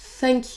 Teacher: Vous placez donc votre langue, vous sortez de l'air, comme si vous vouliez produire un son S en ayant votre langue collée au niveau de vos dents. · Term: son TH